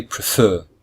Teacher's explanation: there are two syllables and the second syllable is stressed so we say prefer we don't say prefer we say prefer